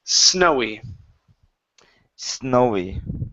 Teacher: instead of snowy with a Z sound it's an unvoiced s